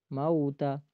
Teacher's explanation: آگے لام کے اوپر جزم ہے تو قاف کو لام کے ساتھ ملائیں گے، خلق الموت، اور میم ہے، میم کے بعد واو ہے اور واو ساکن ہے اور میم کے اوپر زبر ہے، تو واو ساکن ہو اس سے پہلے زبر ہو اس کو واو لین کہا جاتا ہے، اور اس کو ایک الف کی آدھی مقدار کھینچیں گے، موتا۔ آگے تا ہے اور تا متحرک حرف ہے، اس کو کھینچنا نہیں ہے، خلق الموت والحیات، یہ غلط ہو جائے گا، یہ حرام درجے کی غلطی ہے، اس سے بچنا ہے، خلق الموت والموت شارٹ کو پڑھنا ہے۔